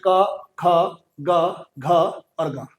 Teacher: तो कंठ वर्ग से हमारा जो कंठ होता है, इस कंठ से, कंठ जो हमारा ये कंठ होता है, यहां कंठ से बोले जाते हैं, जैसे क है ना, ये क, ख, ग, घ और ग, ये जो 5 है, पूरा जो ये क वर्ग है, ये पूरा पूरा कंठ से बोला जाता है